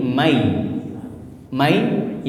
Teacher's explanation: masuk ke huruf di depannya dengan gunah nunnya melebur ke ya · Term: idgham bigunah